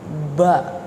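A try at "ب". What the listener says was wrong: Jangan bua. Ba.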